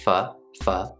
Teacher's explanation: we have the F sound followed by the short U sound, or the schwa sound when we're speaking a little bit more quickly.